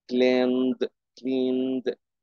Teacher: دول لما نضيف لهم اي دي نطق د، وخدوا بالكم د مش اد